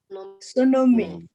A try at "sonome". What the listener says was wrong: Okay, has said sonomi, but if you look at it, there's a dot underneath the O. So it's sonome. Sonome. And I think because there should be a dot underneath the E. So it's sonome.